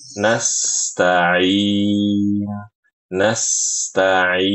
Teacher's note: ketika membaca nastain huruf sin dialirkan